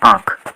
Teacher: अनुनासिक का कैसे होता है, नाक और मुँह से। अनुस्वार का कैसे होता है, नाक से।